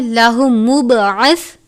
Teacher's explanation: ادغام کا قاعدہ لگتا ہے، لیکن لام اور را پر غنہ نہیں کرتے، اس لیے ہم اس کو لنبی نہیں پڑھیں گے بلکہ لنبی اللہ مبعث، تنوین کو لام مشدد سے ملا کر ادا کریں گے. با پر قلقلہ کرتے ہیں